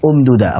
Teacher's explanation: Jadi dibaca sebagai mat, dua harakat saja. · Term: Silah qasirah